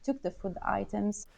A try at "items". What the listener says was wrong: I'm hearing items like the I diphthong vowel thing at the beginning of the word. The first syllable is too drawn out.